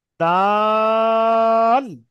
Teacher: প্রথমে টান দিয়ে চলে গিয়ে শেষে ল উচ্চারণ হবে